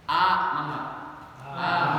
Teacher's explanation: Huruf hamzah keluar dari tenggorokan bagian bawah pangkal tenggorokan. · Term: Makhraj hamzah